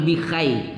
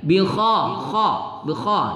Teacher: ketika baca k itu terangkat anak lidah ke langit-langit